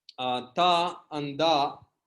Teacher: If you want to produce ta means your tongue will close the system at little bit deeper. But if you close at teeth, that is ta, dental sound